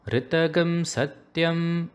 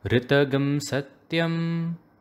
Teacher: the ta and gum of ritagam should be chanted in the middle pitch